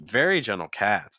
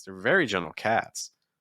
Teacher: then you're going to go down on gentle, and then you're going to go up a little bit on cats.